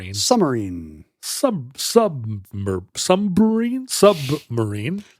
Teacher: You're kind of swallowing the B.